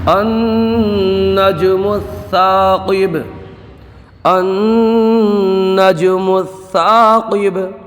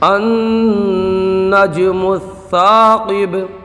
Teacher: یہاں پر ایک قاعدہ سمجھ لیں کہ قرآن پاک میں بعض کلمات الف سے شروع ہوتے ہیں، الف پر کوئی حرکت نہیں ہوتی، تو ان الف پر جو بھی حرکت لگا کر کے پڑھتے ہیں وہ عارضی حرکت ہوتی ہے، تو یہاں پر عارضی زبر لگا کر کے ہم پڑھیں گے۔ نون میں گنہ ہوگا اور جیم میں قلقلہ ہوگا۔ یہاں پر الف میں مدہ ہوگا، قاف کو پر پڑھیں گے، اور با میں قلقلہ ہوگا۔